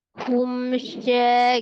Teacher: mim sukun bertemu dengan shin itu izhar safawi dibaca dengan jelas tapi mimnya memiliki sifat tawasud jadi ditawasudkan mimnya ya.